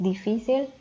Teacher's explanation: la sílaba tónica está en el penúltimo lugar